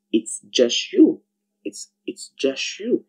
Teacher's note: the sound T in the word just is silent